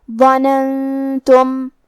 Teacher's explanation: کلمت ظننتم یہاں نون ساکن ہے، پھر حرف التا آتا ہے. تا حروف الاخفاء میں سے ہے، تو ہم یہ حکم کو غنہ کے ساتھ ادا کریں گے